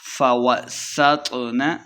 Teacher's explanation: سین پہ سیٹی کی آواز آئے گی، تو کو موٹا پڑھنا ہے۔